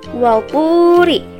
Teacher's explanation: Nah, di sini ada mad tabi'i, yaitu waw sukun sebelumnya berharokat domah. Maka cara membacanya harus dipanjangkan sebanyak 2 harokat